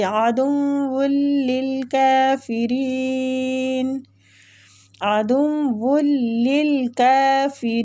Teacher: را کسرہ کی وجہ سے باریک پڑھیں گے